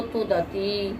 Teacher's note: तो स्वर क्या हो जाएगा? तू द अनुदात्त, ती उदात्त, तो तुदती